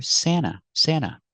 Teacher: When you have NT between vowels, you don't hear the T. You hear Santa, Santa.